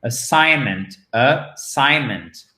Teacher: prononciation du A, qui est comme un E atténué, certes, chers amis, atténué, mais qu'on entend tout de même.